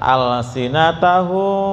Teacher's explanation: Jadi mematinya itu disamarkan. Jadi nah untuk menghasilkan suara yang samar, bibir atas dan bawah tidak terlalu rapat ya, nggak rapat. Alsinatahu gitu ya, nggak rapat, kayak ada jarak selembar kertas ya Pak, sampai kayak ada rasa getaran gitu ya. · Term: Ikhfa safawi